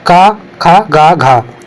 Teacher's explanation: क ख ग घ तो ये सब कंठ से